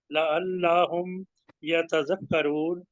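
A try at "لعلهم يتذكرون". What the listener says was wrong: हाँ जी, लअल्लाह नहीं पढ़ना इसमें, लअल्लाहुम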